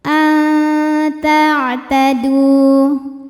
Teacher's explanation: Alami an ada ikhfa aqrab. Karena nun sukun menghadapi huruf ta. Maka nunnya samar-samar menuju ta disertai dengung.